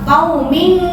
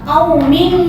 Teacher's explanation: Kalau ketemu qaf sama kaf, nah itu cara menyamarkannya itu eng-nya nampak.